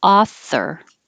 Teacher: the th is voiceless so no sound just author